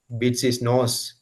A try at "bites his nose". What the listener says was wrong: Bites his nose. Bites, not bits. Bites.